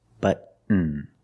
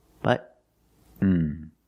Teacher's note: Stop T and fall to the N.